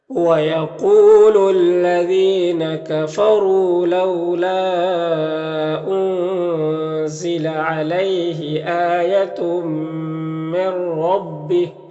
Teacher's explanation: تو تنوین کو میم سے ملا کر غنہ کے ساتھ پڑھیں گے، اس کو ادغام ناقص کہتے ہیں